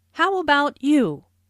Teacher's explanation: Notice the intonation falls here because the speaker is going to follow it up with a detailed question.